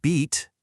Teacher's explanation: For that E sound in beat, which phoneticians write as an I, your tongue is way up high and pushed toward the front of your mouth.